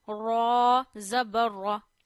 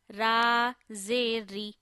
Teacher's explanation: But when zair comes below raw, then we will read raw in a thin voice.